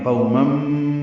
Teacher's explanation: تنوین کے بعد میم آنے کی وجہ سے مم، یہ ادغام ہے غننے کے ساتھ. آواز ناک کے بانس سے ملے جا کر دو حرکات تک ٹھہرائیں گے